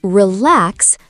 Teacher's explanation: The stress is on the second syllable. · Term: word stress